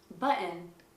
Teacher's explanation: if there is a double T, the T might actually be glottalized in American.